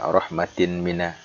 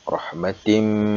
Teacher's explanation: Idgham Bighunnah itu dia harus dibaca dengung